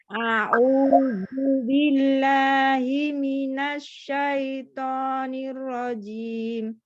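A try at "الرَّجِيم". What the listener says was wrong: Nir. Jadi dia itu ada tasydid, Bu. Nirrajim.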